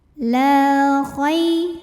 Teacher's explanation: Karena ada alif didahului baris fathah, maka cara bacanya lam dipanjangkan 2 harokat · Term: mad tabi'i zahiri